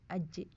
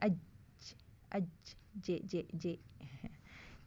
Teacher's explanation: tengah lidahnya nempel ke langit-langit